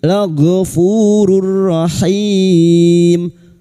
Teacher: duma tanwin bertemu ra, idgham bila guna, masuk pada huruf ra tanpa mendengung